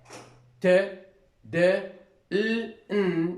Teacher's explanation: the tip of the tongue is in contact with the alveolar ridge. The tip of the tongue is close or is in contact with the alveolar ridge.